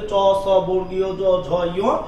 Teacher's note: চ, ছ, বর্গীয় জ, ঝ, ঞ, এগুলো কোন ধ্বনি? এগুলো হচ্ছে তালব্য ধ্বনি